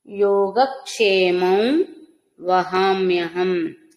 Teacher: యోగక్షేమం అనుస్వరం నాసిక ద్వారా వకారం